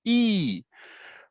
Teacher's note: the tongue is, you know, a little bit high and it's tense. It's not relaxed. It's high and tense. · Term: E sound